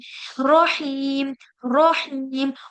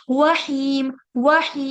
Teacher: र के साउंड में गलती क्या होती है कि इसको इतना मोटा कर देते हैं कि होठों को गोल कर देते हैं उससे क्या होता है ये वाओ की तरह निकलता है ठीक